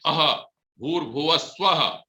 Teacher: और जब विसर्ग बोलते हैं अह भूर्भुवः स्वः, तो हमारा मुंह खुलता है, कंठ से होता है